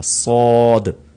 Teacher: اس میں سیٹی کی آواز بھی آئے گی لیکن اس کو ساد نہیں پڑھا جائے گا بلکہ تھوڑا سا موٹا کر کے پڑھا جائے گا